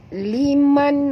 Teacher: Nun mati bertemu kha, tak boleh dengung, izhar halqi ya. Ya. Bacaannya terang, jelas, tanpa dengung.